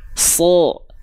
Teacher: huruf Shad ketika berharakat fathah dia kan enggak dibaca sa tapi dia dibacanya sho